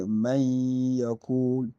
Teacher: we do have to make idgham. That is to join the letters and make ghunnah. That is the long nasal sound.